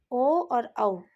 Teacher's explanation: कंठ और ओष्ठ से 2 स्वर हैं ओ और औ। ये 2 स्वर ध्वनियाँ कंठोष्ठ कहलाती हैं।